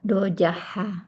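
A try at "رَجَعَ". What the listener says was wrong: Raja'a, ain ya, ini bukan ha, ain.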